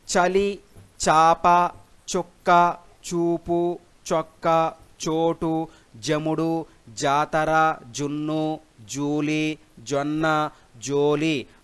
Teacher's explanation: అ ఆ ఉ ఊ ఓ ఓలతో కూడిన చజలను దంత్య చజలు అంటారు.